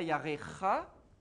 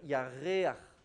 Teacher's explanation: On en avait vu, je ne sais plus où, mais c'est quand devant une gutturale, quand tu as une voyelle fermée, un e ou un ou ou un i, et qu'il faut faire une gutturale ha normalement le chet se prononce ha, yareach. Et donc il faut ouvrir la gorge, et donc du coup, on est obligé de passer par un petit a très bref. Donc on appelle ça un patar furtif.